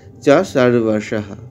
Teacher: শেষে বিসর্গ হ উচ্চারণ হচ্ছে